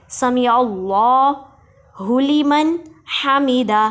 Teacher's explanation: جی سمیع اللہ میں سین کو سیٹی کی آواز سے ادا کریں گے، عین کو حلق کے درمیان والے حصے سے ادا کریں گے، اور اس میں جلالت اللہ کے لام کو موٹا پڑھیں گے